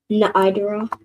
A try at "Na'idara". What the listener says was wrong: Na'idara. Perfect.